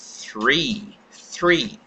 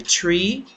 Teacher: Three. Então, você faz o som do TH e imediatamente a língua sai do som do TH fricativo, volta-se para trás, pronunciando o R e finalizando com o som vocálico